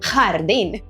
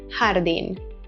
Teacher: In Spain, you'll often hear a harsher, more guttural sound, as in the word jardín, but here in Latin America, it's more of a softer jardín.